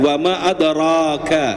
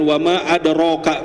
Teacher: Fathah itu sifatnya membuka jadi bukan manyyun gitu Pak ya.